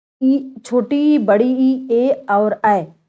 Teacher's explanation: जीभ का अगला भाग ऊपर उठता है, इसलिए ये अग्र स्वर कहलाते हैं